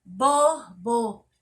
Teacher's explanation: na palavra borboleta, a sílaba mais forte é o lê.